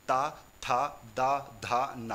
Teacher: जैसे ही आप ता बोलते हो तो जीभ आपके दांतों को स्पर्श करती है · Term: दंत्य व्यंजन